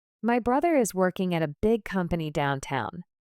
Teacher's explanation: The stressed words are brother, working, big, company, and downtown.